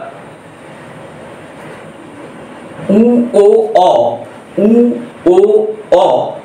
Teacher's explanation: এ আর এবার যখন আমরা উ ও অ এই তিনটি স্বরধ্বনি উচ্চারণ করব তখন দেখব যে জীবের অগ্রভাগ পিছনের দিকে বাকছে অর্থাৎ পশ্চাৎ দিকে বেকে আসছে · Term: পশ্চাৎ সরধনি